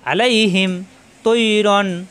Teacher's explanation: আ কণ্ঠনালীতে চাপ দিয়ে আল পড়া যাবে না, আল পড়লে হামজা হয়ে যাবে